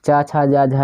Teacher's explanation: चा छा वर्ण का उच्चारण, चा छा, तो ये दोस्तों आपके एक प्रकार से होते हैं, तालु से होते हैं, चा छा जा झा ये तालब भी होते हैं।